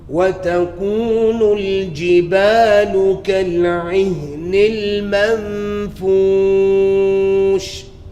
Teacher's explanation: My mam should be the same length as my jibal. Alif is also 2 harakah, same length.